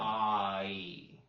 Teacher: In Southern accented English, it's common to split diphthongs. So instead of saying I, which is two vowels together, ah, e, right?